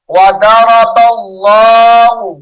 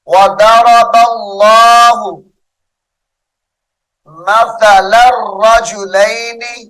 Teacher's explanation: اس میں جلالت اللہ کلام موٹا کر کے پڑھا جائے گا